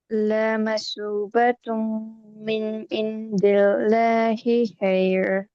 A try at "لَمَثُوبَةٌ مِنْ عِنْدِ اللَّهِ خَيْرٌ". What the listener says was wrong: عند اللہ خیر، اور ساتھ میں لا کو لمبا نہیں کرنا.